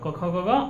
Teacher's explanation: तो कवर्ग का उच्चारण स्थान कंठ हो गया